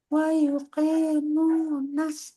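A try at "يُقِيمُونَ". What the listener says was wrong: usahakan qinya harakat kasrah sempurna i gi qi wuqi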